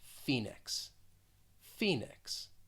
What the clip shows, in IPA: ˈfi nɪks